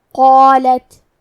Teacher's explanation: مد الف اپنے پیچھے والے حرف کا حکم لیتا ہے تفخیم میں اور ترقیق میں تو ہمیں مد الف کو بھی بھاری آواز میں ادا کرنا ہے